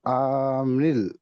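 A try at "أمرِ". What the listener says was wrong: আমরিল, এখানে কোনো টান নেই।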